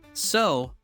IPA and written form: səʊ (so)